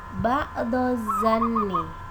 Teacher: Lafal ini mengandung idgham syamsiyah karena terdapat huruf alif lam yang tidak dibaca, sehingga cara membacanya langsung masuk pada huruf selanjutnya, yaitu huruf zo